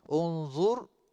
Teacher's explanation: Unzur, ra tebal. Ra mati sebelum dia berbaris hadapan. Tebal.